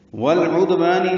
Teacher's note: تا نرمی سے ادا ہوگا اور اس پہ حمس ہوگا۔ والعدوان لام ساکن پہ اظہار قمری ہے، دال ساکن پہ قلقلہ ہے